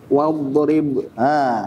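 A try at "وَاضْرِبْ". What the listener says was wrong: Ri-nya tipis. Wadrib.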